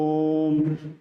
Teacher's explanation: ओम तो इसमें भी बहुत ज्यादा समय लेते हैं इसीलिए इसको पुलत स्वर माना गया है